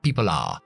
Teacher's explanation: Hacemos un linking ahí entre la L y el are, pero no está contraído, no está juntos.